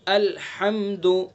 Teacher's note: ہا کو ہمیں حلق سے نکالنا ہے، حلق کے بیچ سے